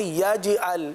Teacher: یاد رکھیے کہ جیم پر قلقلہ ہوگا, جیم ساکن ہے. یجعل یجعل نہیں پڑھیں گے یجعل.